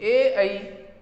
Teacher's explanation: तो ए ऐ ये जो दो वर्ण हैं इनका उच्चारण स्थान कंठ तालु है। कंठ प्लस तालु दोनों की सहायता से ये ए और ऐ वर्ण उच्चरित होते हैं।